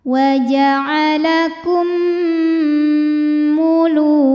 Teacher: mim yang sukun dimasukkan ke mim kedua disertai bunyi dengung. Jadi bunyinya M tapi ditahan. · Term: idgham mimi